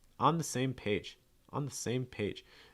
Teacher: page is actually going to get your stress